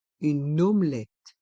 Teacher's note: Le E de une devient muet et on fait la liaison avec le N de une et le O de omelette.